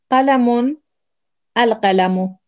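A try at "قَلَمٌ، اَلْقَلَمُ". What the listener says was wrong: The pen, very good.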